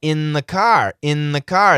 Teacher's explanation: That N kills the th. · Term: cancellation